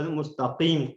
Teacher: مستقیم قاف ہوگا، بولڈ ہوگا، یہ مستقیم کاف والا نہیں ہوگا